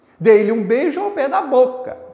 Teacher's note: Na palavra boca, qual que é a sílaba forte? É bo. Portanto, eu só vou contar até esta sílaba forte.